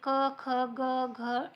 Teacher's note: तर ते आता पाहणार आहोत अ आ कंठवर्णामध्ये येतात जे उच्चारणा उच्चार करताना त्याचा कंठाला थोडासा जे आहे तान पडतो त्याच्यामुळे कंठवर्णामध्ये येतात